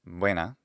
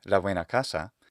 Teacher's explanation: And like I mentioned, the letter V and the letter B represent the exact same sound, so that buena just means good, and that starts with a B. But if I say la buena casa, then that B becomes the voiced bilabial approximate or fricative sound